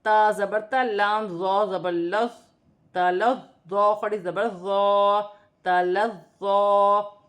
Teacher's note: ظا نرمی والا حرف ہے، سیٹی نہیں ہوگی، مشدد ہے، 2 مرتبہ پڑھا جائے گا.